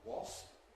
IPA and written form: wɒsp (wasp)